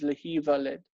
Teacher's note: As with all nifal verbs in the future and in the infinitive, the nun is assimilated into the other letter. So lehin valed becomes lehi valed.